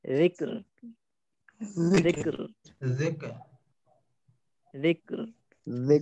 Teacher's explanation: রালটা আরো নরম হবে হ্যাঁ যদি জিব্বার আগে দাঁতের আগের সঙ্গে লাগাই শক্ত হওয়ার কোনো স্কোপই নেই